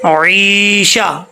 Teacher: فہو پڑھیں گے مسٹیک ہو جائے گی، فہو، فہو فی عیشہ، عیشہ عین ہے، عین کو کلیئر کرنا ہے، حمزہ نہیں پڑھنا